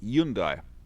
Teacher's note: in the korean language uh the h is actually silent so it's yundai that's the one that's a correct way to